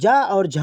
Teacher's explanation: जा और झा हैं आपकी तालु से बोली जाती हैं